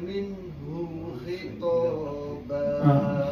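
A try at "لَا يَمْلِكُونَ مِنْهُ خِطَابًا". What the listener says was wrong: Hu pendek. Minhu khitaba.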